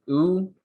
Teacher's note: high and back with lip rounding